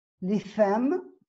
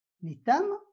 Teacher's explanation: L'interdentale tha, inconnue au français, est remplacée par la consonne dentale ta, donc t, qui existe en langue d'accueil.